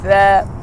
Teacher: ان کو پڑھتے وقت ہم نے یہ دھیان سے پڑھنا ہے کہ زبان کا کنارہ اوپر کے دانتوں کے اندرونی کنارے پر لگے